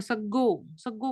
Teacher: रफार चला गया और ग का द्वित्व हो गया।